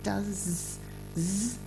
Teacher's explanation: the S it's not really an S it's more like a zed I think or somewhere in between